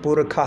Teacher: ഈ ഷകാരം ശുക്ലയജുർവേദത്തിൽ വരുമ്പോൾ അത് പുരുഖ എന്നാവും. ഖ എന്ന് ഉച്ചരിക്കും.